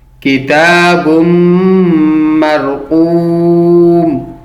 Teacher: کتاب کاف کو باریکی سے پڑھیں گے اور تا کو 1 الف کی مقدار کے برابر کھینچ کے پڑھیں گے